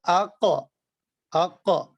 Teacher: اچھا, جن حروف میں یہ صفت شدت پائی جائے نا, جن حروف میں صفت شدت پائی جائے, ان کو ان کے مخرج سے ادا کرتے وقت آواز ان کے مخرج میں اتنی قوت اور سختی کے ساتھ ٹھہرتی ہے کہ آواز بند ہو جاتی ہے